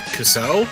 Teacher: you put the emphasis on the second syllable rather than the first